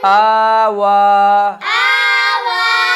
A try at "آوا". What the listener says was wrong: آوا آوا، شد کی بو پیدا کر کے نہیں پڑھنا، ٹھیک ہے۔ آوا حمزہ کھڑا زبر آ،